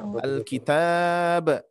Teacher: Nah, cuman dengan catatan kalau misalkan diwakafkan berarti dia ba-nya memantul ya, karena menjadi sukun